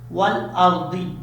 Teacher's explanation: را ساکن سے پہلے زبر ہو تو را پر پڑھا جاتا ہے